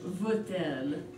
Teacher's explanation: So veut-elle, and the reason why we have this hyphen here is just to connect the two words, since elle begins with a vowel, so we pronounce the T in the middle